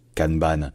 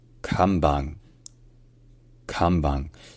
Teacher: le N se prononce de manière contextuelle en japonais lorsqu'il précède un B ou un P ça devient me donc au début c'est C et non pas CAN et enfin